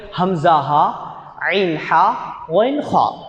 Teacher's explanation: தொண்டையுடைய கீழ் பகுதி ஹம்ஸா ஹா தொண்டையுடைய நடுப்பகுதி ஐன் ஹா தொண்டையுடைய மேல் பகுதி வைன் ஹா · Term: தொண்டையுடைய எழுத்துக்கள்